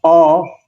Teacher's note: when you say oh now the tongue is in the back